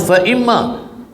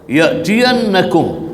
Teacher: Hukum dia wajib al-ghunnah ataupun harfu ghunnah musyaddadah, kena dengung 2 harakat.